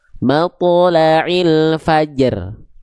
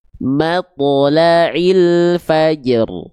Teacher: ro sukunnya tidak hilang dan dibaca dengan keadaan tebal